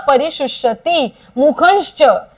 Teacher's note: मुखंश परिशुष्यती, नाकामध्ये बोलायचा आहे उच्चार.